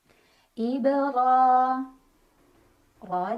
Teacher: ro dibaca secara tafkhim karena ro berbaris dan barisnya di atas jadi bacanya tebal dengan mengangkat pangkal lidah